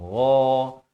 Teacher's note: Ghain juga makrajnya di hujung kerongkong